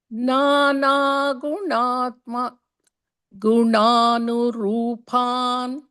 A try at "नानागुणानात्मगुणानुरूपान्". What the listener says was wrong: No, you missed a na there. One more time.